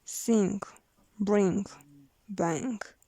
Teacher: Voiced velar nasal, prevelar, sing, bring, bang.